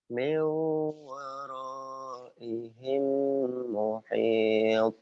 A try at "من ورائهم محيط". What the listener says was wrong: Tuh, itu sebetulnya suaranya bagus, cuman lagunya tuh kayak apa ya? Kayak ke Palembang, ke seberang ke Palembang gitu ya.